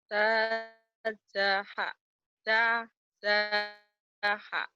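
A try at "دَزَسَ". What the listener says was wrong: Za. Dazaso. Jangan dajaiso ya. Dazaso.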